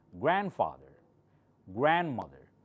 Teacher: See, I'm not saying grandfather. This D is almost silent. You don't hear it.